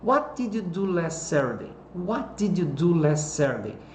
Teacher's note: a entonação está sobre as palavrinhas de WH. Fica do mais alto para mais baixo.